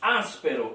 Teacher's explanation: Áspero, as é pronunciada com mais força. Está aqui a última sílaba, ró.